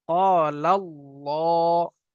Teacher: আল্লাহ শব্দের আগে জবর অথবা পেশ আসলে আল্লাহর লামটাকে পুর অর্থাৎ ল পড়তে হয়।